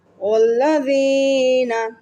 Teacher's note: واو کو لام سے ملایا، لام کو 2 مرتبہ تشدید کی وجہ سے ادا کیا. وینا، زال کی آواز دی ہے، زا کی آواز نہیں دی.